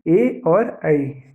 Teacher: इनकी सहायता से बोला जाने वाला, इन दोनों के योग से बना अक्षर है ए और ऐ, तो ये किससे बोले जाएंगे? कंठ और तालु दोनों की सहायता से बोले जाते हैं। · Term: कंठ तालु